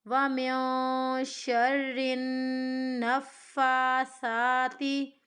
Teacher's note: فا کو اور سا کو ہمیں کھینچنا ہے کیونکہ دونوں کے اوپر کھڑی زبر کی حرکت ہے۔